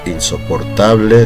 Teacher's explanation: insoportable termina en vocal, sílaba tónica tal